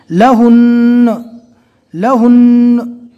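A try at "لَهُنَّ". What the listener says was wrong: یہاں پر لہن نہ نہیں پڑھنا, لہن نہ, تو یہ نون پورا ہو گیا دوسرے نمبر کا, بلکہ دوسرا نمبر کا جو نون ہے تشدید والے حرف کو ڈبل پڑھا جاتا ہے, لہٰذا دوسرے نمبر کا جو نون ہے اس کو آدھا پڑھنا ہے.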